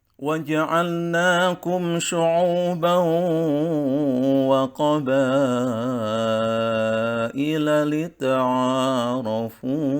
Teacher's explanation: tingkatan nada yang tiga diawali dengan datar dan diakhiri dengan rendah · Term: nada tingkatan yang ketiga